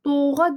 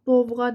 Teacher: V düşmür orada. O da uzanmır.